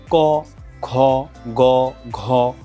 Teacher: উচ্চারণ করে দেখুন ক খ গ ঘ যেটা কি হচ্ছে যে জিওভার গোড়ার দিকের নরম তালুর পেছনের যেই ভাগটা এই জায়গাটা আসলে স্পর্শ করা হচ্ছে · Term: কণ্ঠস্পর্শ ধ্বনি